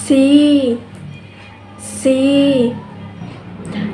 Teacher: The tongue is high and the front part of the tongue is raised, and the lips are unrounded.